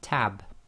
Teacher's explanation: B in the word tab doesn't have its own vowel after it, but it joins to the ta sound before it.